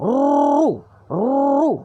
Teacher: Ra di depan ru, getarkan lidahnya, muncung. Ru. Begitu.